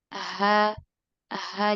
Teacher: jadi dia kayak bergetar Iya pita suaranya bergetar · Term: ihtizaz